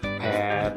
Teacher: cara memproduksi suara dengan bertemunya dua bibir atas dan bawah